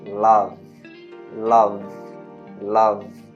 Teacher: Se você fizer o experimento de colocar a mão na garganta e falar love, love, love, no V você vai sentir que a garganta tremeu. Então quer dizer que esse V é um voice sound, ou seja, é uma consoante que faz as cordas vocais vibrarem, certo?